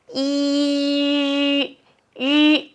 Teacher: It's the tongue position of E, but the mouth shape of U. So, E, my tongue position didn't change.